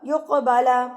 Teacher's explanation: جب ساکن ہوگا تو قاف پر قلقلہ کیا جاتا ہے، اس کو ہلا کے تھرتھراہٹ سے اپنے مخرج کے ساتھ ٹکر کھا کے لفظ واپس آئے گا